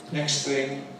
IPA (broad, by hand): ˌneks ˈθɪŋ